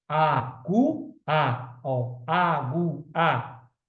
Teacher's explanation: o som aumenta, cresce do menos para o mais forte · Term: ditongo é crescente